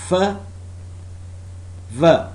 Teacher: Labiodental. The articulators involved are lower lip and upper teeth. The sounds produced are f, v.